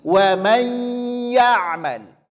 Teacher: Yang pertama bunyikan dia ke huruf I. Kesalahannya adalah bunyinya ke huruf E. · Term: idgham bighunah